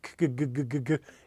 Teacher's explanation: let the K sound engage your vocal cords good good good good good it becomes a G so there